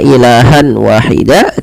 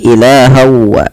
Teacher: apa yang dimasukkan adalah bunyi suara Nun kepada bunyi W awalnya ilahan Wahida karena kita masukkan menjadi ilahwa langkah yang kedua